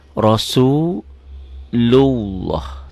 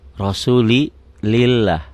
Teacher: lafaz Allah ini berbunyi O kalau sebelumnya baris di atas nih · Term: tebal